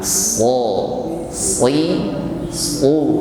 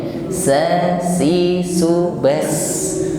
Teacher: Jadi mengucapkan shad ini diiringi dengan isti'la, terangkatnya lidah bagian pangkal.